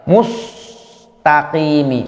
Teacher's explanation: Ketika terkena huruf sin, bibir masih monyong, maka jadi tebal sinnya.